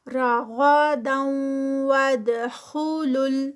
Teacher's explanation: ود غنہ ادغام ہے تو 2 counts کا اسٹریچ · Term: ادغام ود غنہ